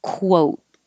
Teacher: it's really a kw so you start with your lips rounded